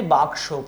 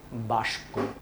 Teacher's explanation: প্রথমে ছিল ক, পরে ছিল স, কেউ কেউ বলে এটাকে বাস্ক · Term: ধ্বনি বিপর্যয়